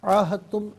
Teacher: عاہدتم، عین کھڑا زبر آ اور عین الف زبر آ دونوں طریقوں سے پڑھنا درست ہے۔ یہاں پر دال کی آواز نہیں ہوگی بلکہ تا کی آواز کو ادا کیا جائے گا